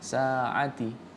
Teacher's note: Sa-nya jangan terlalu panjang, 2 harokat saja.